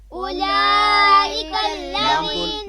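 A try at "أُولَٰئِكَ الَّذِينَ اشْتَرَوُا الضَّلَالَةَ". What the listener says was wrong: لام کو لمبا کریں، یعنی اس کے اوپر بڑی مد ہے، کھڑا زبر بھی ہے اس کے اوپر، بڑی مد ہے جس مد کی آواز جو ہے وہ مقدار 5 الف کے برابر ہے. اولئک الذی. ٹھیک ہے، لام کو لمبا کر کے پڑھیں گے.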